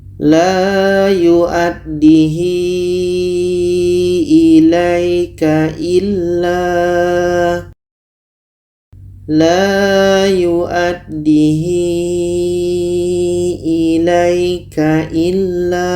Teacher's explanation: Kita panjangkan 4 sehingga 5 harakat.